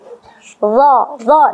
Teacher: Jadi huruf ini adalah huruf yang keluar dari ujung lidah dan dia kita tempatkan di gigi seri atas, ya, bagian bawahnya, ya, dan harus keluar. Dha, dan dia adalah huruf yang dibaca tebal, ya, nggak bisa kalau ditipiskan za, jatuhnya ke huruf za. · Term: huruf dha